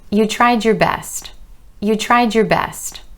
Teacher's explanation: So something similar happens when you have a word that ends in D or the D sound, and the next word starts with Y or ya. Instead of the ya changing to a ch, it changes to a j, like judge or jelly or joke, the J sound, j. · So again, that word your is reducing to your, and the ya sound coming after the D is changing to j